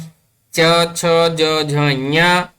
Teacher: इचु यशानां तालु, तालव्य ध्वनिः अस्ति, तालुना स्पर्शं कृत्वा आगच्छति।